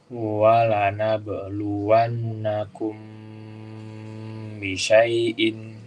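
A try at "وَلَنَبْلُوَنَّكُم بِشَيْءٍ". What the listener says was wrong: Bagus, ahsantum.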